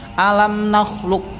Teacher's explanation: Maka ini mantulnya dihilangkan, kemudian dimasukkan ke huruf kaf. · Walaupun ini qaf sukun tetapi tidak boleh dibaca qalqalah, tidak boleh mantul ya, karena langsung bertemu dengan kaf ya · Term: idgham mutaqaribain